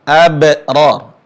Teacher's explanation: qalqalah, mantulnya suara huruf ba